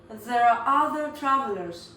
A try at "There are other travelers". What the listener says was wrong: Yes, that'd be perfectly fine, although we often actually pronounce that R sound at the end of the word are, so we'd probably say there are other travelers.